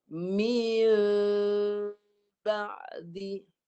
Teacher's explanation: Mi tapi jangan rapat. Jangan rapat supaya kedengaran mim itu tidak jelas. Sebab dia perlu diikhfakan.